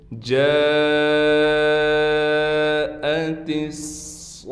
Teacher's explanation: وقف میں ہا بن جائے گی